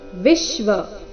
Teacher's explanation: विश्व वी के ऊपर आघात